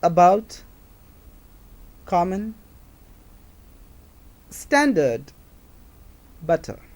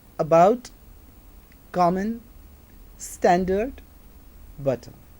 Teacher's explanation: Center of the tongue is raised, and that's why this is central vowel, because the center of the tongue, જીભનો મધ્ય ભાગ એ ઊંચો ઉપર ઉઠે છે અને એનું પ્રોડક્શન થાય છે.